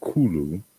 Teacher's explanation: the aspirated K, the voiceless velar, and then followed by the liquid L.